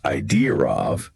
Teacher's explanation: that's probably that intrusive R sound sneaking in there.